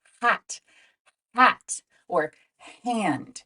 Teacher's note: our throats it's the H sound like in the word hat we create the Sound by letting air flow through the back of our throat without using our vocal cords it's a breathy sound and it comes from very back here so try hat hat